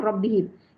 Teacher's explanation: bila mim sukun, kita kata mim sukun ya, bacaannya pendek, jelas, tidak berdengung, namanya izhar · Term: Izhar syafawi